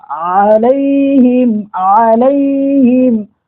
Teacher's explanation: یہ عین حلق کے درمیانی حصے سے ہی نکلتا ہے. جیسے ہا کے بارے میں آپ کو بتایا تھا کہ ہا وسط حلق یعنی حلق کے درمیانی حصے سے ہا نکلتا ہے, اس طریقے سے عین میں نکلتا ہے.